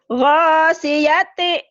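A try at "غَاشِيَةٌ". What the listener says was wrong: Anginnya mana shinnya? Jangan lupa ya, kau bisa. Yang lain susah ngucapin shin.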